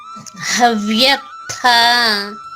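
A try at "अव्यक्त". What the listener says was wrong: నొక్కి చెప్పకర్లేదు, అవ్యక్త. తేలిగ్గా చెప్పండి.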